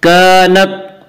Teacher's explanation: कानत अलिफ मद्दा, अलिफ हमेशा मद्दा होता है, अलिफ से पहले ज़बर होता है। अलिफ मद्दा को एक अलिफ के बराबर खींच कर पढ़ेंगे